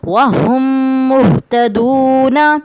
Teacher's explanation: میم ساکن کے بعد میم مشدد آیا ہوا ہے تو یہاں پہ بھی ہم غنہ کریں گے